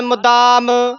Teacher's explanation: ਦਦਾ ਹੀ ਬੋਲਣਾ ਮੁਦਾਮ ਧਦਾ ਨਾ ਬੋਲਿਆ ਜਾਵੇ।